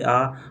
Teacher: मुख द्वार के खुलने के आधार पर स्वर 4 प्रकार के होते हैं, जो इस प्रकार हैं। विवृत, जिन स्वरों के उच्चारण में मुख द्वार पूरा खुला रहता है